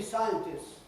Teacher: the plural of scientist used to be scientists with a long S, right? Losing the T. And then a lot of people, half-educated people, if you like, in terms of phonetics, want to make sure they have the right pronunciation, and they try and keep the T.